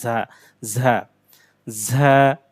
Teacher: দুই দাঁতের মাঝখান থেকে শক্ত করে, তবে একটু বাতাস বের হবে দুই দাঁতের মাঝখানে